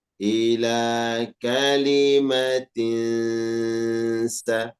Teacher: Ada tanwin bertemu dengan huruf sin. Di situ tanwinnya ya dibaca samar disertai dengung. Jadi harus ada dengungnya. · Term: ikhfa hakiki